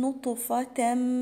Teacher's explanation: حرف الطاء مقلقل عشان هو ساكن